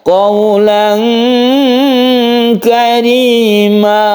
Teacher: ada huruf ikhfa yang condong ke eng, yaitu huruf kaf dan qaf ya